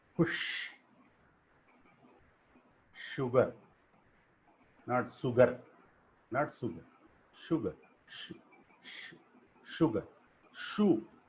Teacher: the tip of the tongue is behind the alveolar ridge and the tongue is close to palate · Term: palato-alveolar fricatives